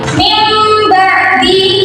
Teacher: Nah ini kan ada nun sukun bertemu dengan ba jadi ini cara membacanya menjadi mim sukun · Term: iklab